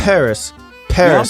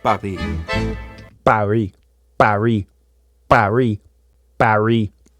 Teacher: palm of your hand up in front of your mouth and say Paris in English you'll feel a little puff of air on your hand